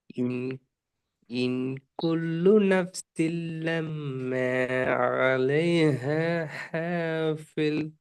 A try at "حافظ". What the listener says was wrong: ஃபில் ஃபில் sound போகுதே. எஸ், ஹாஃபில். حافظ.